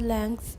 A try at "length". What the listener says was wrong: Put a K in there. Put a K in there. I want to hear the K.